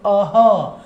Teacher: देखिए अह में भी आप दो प्रकार की ध्वनि बोल रहे हैं, एक आप अ स्वर का उच्चारण कर रहे हैं और फिर अह ह की तरह काकल्य ध्वनि का उच्चारण कर रहे हैं